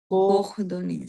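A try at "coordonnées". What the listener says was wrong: Coordone. নিস না, এটা সাইলেন্ট থাকবে না, এই দুইটা সাইলেন্ট থাকবে। Coordone. প্লুরালে আছে, হ্যাঁ।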